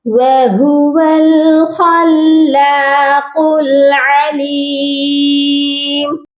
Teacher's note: خا کو لام مشدد کے ساتھ ملایا جائے گا اور لام کو ایک الف کی مقدار لمبا بھی کر کے پڑھیں گے کیونکہ اس کے اوپر بھی کھڑی زبر ہے۔